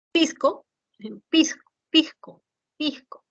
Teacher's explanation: aspiración de S como una J suave